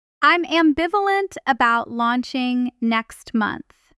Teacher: Feel how the stress falls right on that middle syllable. Ambiv. That's where the word gets its punch.